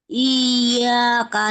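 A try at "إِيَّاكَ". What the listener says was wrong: Nah, ini belum kurang ditekan juga sama seperti Mbak Yanien. Ditekan. Jangan iya kak. Kalau iya kak itu kalau ditulis dia kayak gini. Kalau dilatinkan dia gini. Iya kak. Nah, ini iyanya kan kalau tasydid ini maksudnya iyanya ada dua.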